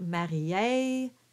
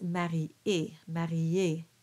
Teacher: there's no diphthongs at the end